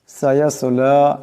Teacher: সায়াসলা এখানে সোয়াদ সাকিন, আওয়াজটা মোটা করে পড়তে হবে।